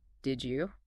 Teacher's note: d plus y can sound like a j